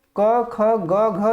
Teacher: क वर्ग की ध्वनियां जो है कंठ में आती हैं, कंठ से इनका उच्चारण होता है, कंठ ध्वनियां कहा जाता है इनको